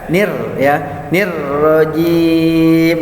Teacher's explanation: Karena sebelum huruf ro ada huruf hijaiyah yang berbaris kasroh, yaitu ni. Jadi ketika masuk melebur ro-nya bertasydid menjadi tarkik, bacanya tipis ya.